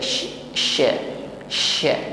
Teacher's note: pada huruf syin bersiap kepada makhraj huruf syin dan jangan lupa Mengucapkan syin ada sifat tafasyi di situ menyebarnya angin di dalam mulut kita